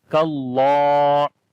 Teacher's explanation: اور لمبا بھی کریں گے، اس کے اوپر کھڑی زبر ہے، کاللہ، کاف کو باریک پڑھیں گے، اللہ کے نام کو موٹا پڑھیں گے، اللہ کے نام کے اندر جو لام ہے، بیسیکلی لام موٹا پڑھا جاتا ہے